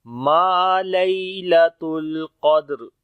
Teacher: اور جب رکیں گے تو را موٹی ہو جائے گی، تو پڑھیں گے ما لیلۃ القدر، اور جب ملا کر پڑھیں گے تو اس وقت را پھر باریک ہوگی.